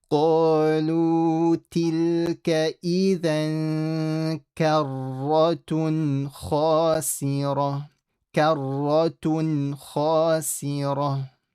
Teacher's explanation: Ra is full, and then the ta changes into a ha.